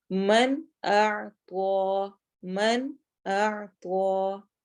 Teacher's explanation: تو ہم اس نون کو کلیئر پڑھیں گے، من پڑھیں گے، ماں یا اس طرح کی ساؤنڈ کوئی نہیں لے کر آئیں گے. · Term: اظہار